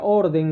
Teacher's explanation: Muy bien, hemos visto que la mayoría de todas estas palabras son esdrújulas y la palabra orden no lleva acento ortográfico, pero sí tiene mayor fuerza de voz en la penúltima sílaba, es considerado como una palabra grave.